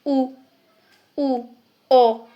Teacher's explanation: इन स्वरों के उच्चारण में होठ गोल हो जाते हैं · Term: वृत्ताकार